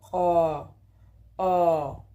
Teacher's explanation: la parte baja de la boca vendría siendo Ah ah y abierto donde la lengua se encuentra en la zona más baja posible